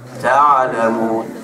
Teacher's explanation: ain ni dia tengah di antara syiddah dengan rakhawah, di antara tersekat dengan terlepas. Jadinya dia ada main sikit. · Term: huruf Ain